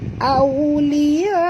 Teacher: Au di sini waw sifatnya lin, lembut. Au muncungkan mulut, tuan-tuan.